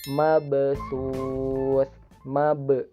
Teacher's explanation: Nah, di sini ada ba bersukun. Jadi huruf qalqalah kondisinya bersukun secara dibaca secara wasol, sehingga ba-nya dipantulkan kecil atau ringan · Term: qalqalah sugro